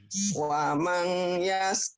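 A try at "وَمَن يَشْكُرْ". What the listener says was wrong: wamai idgom. Wamai kalau ada tasjid nyamber. Wamai. Wamai yashkur fa innama yashkuru li nafsi. Masih utang sin ya.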